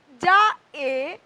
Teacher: এই আ এখানে এ তে পরিণত হয়েছে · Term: গ্লিডিং সাউন্ড